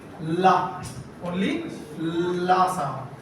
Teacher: the partial closure with the alveolar ridge. The air flows through the sides of the tongue. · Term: Lateral sounds